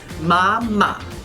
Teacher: Now sometimes we don't come all the way back up on that third tone, so you notice ma, ma, or you can come back up.